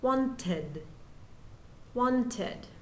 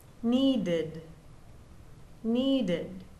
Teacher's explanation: if the root verb ends in t or d, then the ed forms an extra syllable and sounds like id.